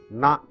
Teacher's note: This is called na, a retroflex noun. Na, bend your tongue, take it up, touch the alveolar and pronounce it, retroflex na